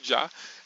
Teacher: no caso do já, é o som do d e do já feito ao mesmo tempo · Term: plosivas africadas